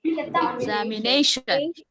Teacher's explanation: As it is a longer word, it has secondary stress also. Nay has primary stress. Exam has secondary stress.